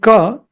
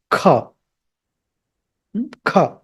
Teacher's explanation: Ka is K, Kha is K, H, A. So when you have to pronounce Kha, you have to get that H sound also in between K and A.